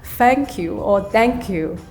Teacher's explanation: I think it's hard for us to say the TH sound. We'll simply just say it in a D sound